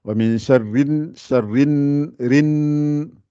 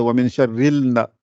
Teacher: il n'y a pas de L, on n'entend pas le L. Après le Ra, on attaque le Nun directement. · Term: lettre Shamsiya